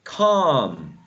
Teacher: You don't pronounce the L. You don't say calm. The L, that L is not pronounced. So you say calm.